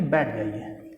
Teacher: ठ आया तो ठ को ट कर देंगे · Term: अल्पप्राणीकरण